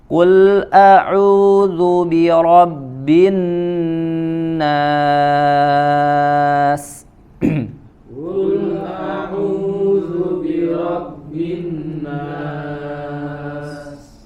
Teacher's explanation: Ada nun bertasydid, ya, selain ditekan ke dalam huruf nun, ya, kemudian dia dipanjangkan, ada ziyadatul gunnah, dia menambah, memanjangkan dengungnya.